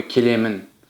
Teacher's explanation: есть мягкий гласный звук е, а после него — ещё один мягкий гласный звук